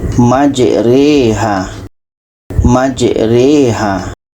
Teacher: jadi itu saja yang asalnya majraha dibaca menjadi majriha ini namanya bacaan imalah